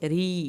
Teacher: یا ساکن کو کھینچیں ایک الف کے برابر